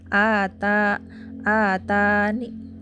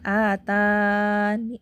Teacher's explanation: Ya, di situ kasroh. Maka raum kan dibaca sepertiga harokat. Jadi ni di situ kita baca kecil sekali ya suaranya.